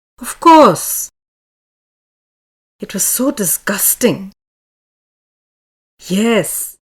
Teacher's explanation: the pitch of the voice rises from mid low level to high mid and then falls again to mid low level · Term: rising falling tone